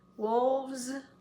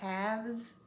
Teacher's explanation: With the word wolf, it ends in an F, but we want to add the S sound, so we're going to change that F to a V because we've got vibrating. F doesn't vibrate. S vibrates.